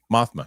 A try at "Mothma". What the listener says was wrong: I don't know if you need to do the big stretch at the end there. Mothma. I don't think you need to do that.